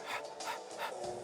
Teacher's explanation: And this is a ha, as in happy, as in happy. It's a breathy, like ha. We don't have a soft H in Nuwabkedi.